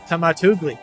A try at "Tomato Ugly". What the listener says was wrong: It's not Tomatugli. It's Tomato Ugly. capitalized the U so people can tell.